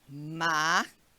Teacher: A gente vai poder identificar, ó, máquina. Então, a gente consegue pronunciar com mais intensidade essa antepenúltima sílaba da palavra máquina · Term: proparoxítona